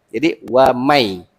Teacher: Kita tak boleh wa mai, tak boleh dengung kan? Jadi nun ni dihilangkan terus masuk pada huruf ya.